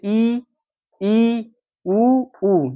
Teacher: ये आपके तालू को जीभ जाके ऊपर टच कर जाती है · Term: संवृत